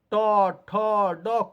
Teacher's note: तालु के अग्र भाग में ये जीभ टच करेगा ट, ठ, ड कुछ भी उच्चारण कीजिएगा तो वहीं पर टच करेगा, उसी जगह को मूर्धा कहते हैं।